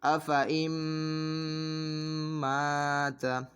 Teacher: الف کو ہم نے باریک بھی پڑھنا ہے کیونکہ الف سے پہلے میم باریک حرف ہے۔ افَإِن مَّاتَ، حمزہ زبر ا، فا زبر فا، افا، حمزہ نون میم زیر ام، افَإِن میم تا زیر مت، افَإِن مت، تا زبر تا، افَإِن مت۔